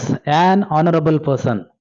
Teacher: ಸೊ ಇಲ್ಲೂ ಕೂಡ ಆನರಬಲ್ ಅಲ್ಲಿ ಎಚ್ ಸೈಲೆಂಟ್ ಆಗುತ್ತೆ